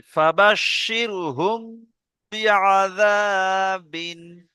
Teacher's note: মিমকে এক আলিফ পরিমাণ গুণনা সহ পড়তে হবে।